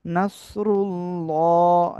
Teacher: এটা এর ডাইনে পেশ মোটা আওয়াজে পড়তে হবে, রর উপরে পেশ থাকলেও মোটা আওয়াজে পড়তে হবে